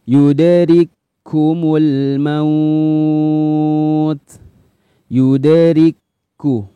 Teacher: Kaf yang pertama disukun, kaf yang kedua berharokat. Maka kaf yang pertama dimasukkan ke kaf yang kedua. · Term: idgham mutamathilain